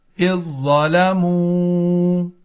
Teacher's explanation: آخر میں واو مدہ ہے، اس کو ایک الف کھینچ کر پڑھیں گے